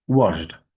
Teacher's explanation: একটু fast speaking করলে ডটা না হয় এটা ঠ এর মধ্যে হবে